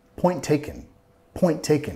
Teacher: no voy a pronunciar las dos ts tenemos una t al final de Point y después una t con taken Point taken Point taken estoy vinculando solo voy